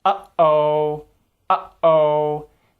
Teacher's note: You'll see glottal stops written like this in pronunciation dictionaries. This sound is made by cutting off the sound in your throat and can be heard quite frequently in certain English expressions like uh-oh, uh-oh.